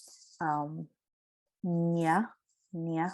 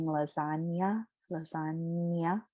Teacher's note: the swirl of the nasality sound is at the front of the mouth